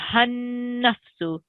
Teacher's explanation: this ha is going to be joined straight to the noon mushaddid. I know it has some blank letters in between, but whenever we see a mushaddid, we think of mushaddid like a magnet.